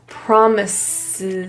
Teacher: In the word promises, the first S is pronounced as a voiceless S. The second is a Z.